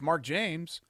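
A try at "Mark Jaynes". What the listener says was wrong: That's with an N. You said Mark James. No, you said James.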